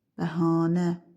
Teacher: İkinci hecanın saiti uzun tələffüz olunur.